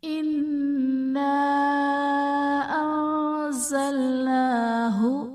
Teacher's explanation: الف سے پہلے زبر ہے، الف مدہ کا قاعدہ ہے، اور حرف مدہ کے بعد حمزہ دوسرے کلمے میں ہے تو یہاں پر مد منفصل کا قاعدہ ہوگا۔ انزلناہ میں نون ساکن کے بعد حروف اخفا میں سے زا ہے تو یہاں پر اخفا کا غنہ کریں گے · انا نون مشدد ہے، نون پر غنہ کریں گے۔ الف سے پہلے زبر ہے، الف مدہ کا قاعدہ ہے، اور حرف مدہ کے بعد حمزہ دوسرے کلمے میں ہے تو یہاں پر مد منفصل کا قاعدہ ہوگا۔